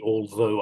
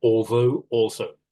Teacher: I do the TH with my tongue sticking between my teeth and pressing down on it.